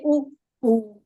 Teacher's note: जो होठ की स्थिति है वो सिकुड़ जाते हैं, पूरे गोल गोल ऐसे हो जाते हैं। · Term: उकार